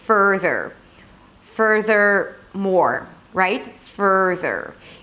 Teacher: Further has no vowel between the F and the R.